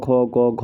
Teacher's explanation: क ख ग घ होती है जो कंठ से उच्चारित होती है